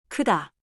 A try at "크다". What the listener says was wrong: 조금만 둥글었어요. You rounded a tiny bit. Again. Lips flat like a soft smile.